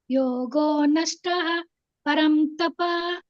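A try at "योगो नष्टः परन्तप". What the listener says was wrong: ಯೋಗೋ ನಷ್ಟ ಪರಂತಪ. ನಷ್ಟ ಪರಂತಪ. ಅದು ಮಧ್ಯದಲ್ಲಿ ಹಕಾರ ಇದ್ರೆ ಫುಲ್ ಹೇಳ್ಬಾರ್ದು, ಅರ್ಧ ಹೇಳಿ. ನಷ್ಟ ಪರಂತಪ.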